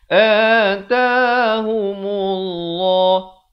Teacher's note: Lafz jalalah di sini dibacakan tebal dua harakat.